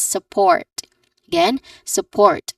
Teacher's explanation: the stress syllable is the second syllable port which has a a little bit longer vowel sound. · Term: stressed syllable